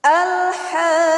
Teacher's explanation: yaitu ada mad tabi'i bertemu dengan huruf yang bertasydid, hukumnya adalah mad lazim kalimi mutsaqqal, panjangnya 6 harokat.